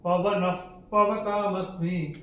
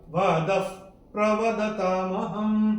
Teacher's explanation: चौथे चरण में द के बाद विसर्ग के बाद का अक्षर है प, और विसर्ग के बाद जब प या फ आता है तो विसर्ग का उच्चारण होता है फ। जैसे हम फूंक मारते हैं वैसे